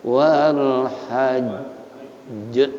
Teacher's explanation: Qalqalah akbar karena jim diwakafkan ada tasydid, jadi double jim bacanya wal hajj, jangan langsung wal hajj, jangan ada wakaf.